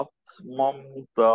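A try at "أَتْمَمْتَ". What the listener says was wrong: মামে একটু বেশি থেমে গেছিল, হ্যাঁ, আতমামতা।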